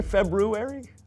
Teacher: most people don't pronounce the first R because it produces a cluster of consonants that isn't commonly used in modern English